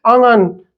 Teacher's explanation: हवा जो है वो मुंह और नाक दोनों से निकल रहा है। ये जो आ हो रहा है, आंत बोल दिया हमने, अंत बोल दिया, तो ये क्या हो गया, हमारा नाक से भी निकल रहा है, तो इसलिए क्या हो गया, ये अनुनासिक स्वर।